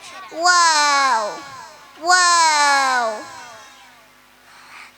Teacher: രണ്ടു ചുണ്ടിന്റെയും ഇടയിലൂടെ വരുന്ന അക്ഷരം